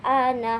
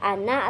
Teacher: pada saat wakaf ana dibaca ana sedikit panjang. Namun pada saat wasal akan dibaca ana atau lebih pendek. Intinya kalau disambung harus kembali ke bacaan asli pendek atau jangan ikut panjang seperti pada waktu kita berhenti.